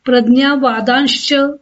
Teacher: विसर्गाच्या पुढे च आल्यामुळे विसर्गाचा श झाला